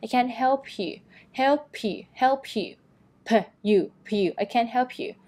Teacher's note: นะคะออกเสียง P ด้วยนะคะทีนี้เนี่ยเราจะสามารถเอาไปเชื่อมกับ U ได้ยังไงให้มันเร็วขึ้นนะคะเพราะมันต้องออกเสียง P แล้วก็มาออกเสียง U ต่อใช่ไหมจากเสียง U ยาวๆให้ออกเสียงแค่ U เป็นสระอุแทนเสียงสั้นๆ